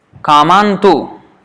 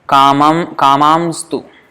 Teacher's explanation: Especially when there is a nasal, Kaman, end with a nasal and then there is a consonant on the other side, then it becomes sibilant and the N becomes M